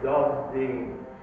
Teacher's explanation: So the voiced consonant influences the voiceless consonant and makes it voiced. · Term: Sandhi